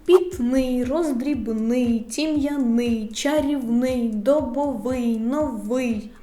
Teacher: третя група слова з наголосом на и